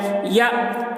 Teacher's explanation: یا تی کا، یا حمزہ زبر یا، حمزہ کے اوپر جزم ہے، جزم والے حرف کو پیچھے والے حرف سے ملا کر پڑھیں گے یا، اور حمزہ ساکنہ ہے، حمزہ ساکنہ کے پڑھنے میں جھٹکا لگتا ہے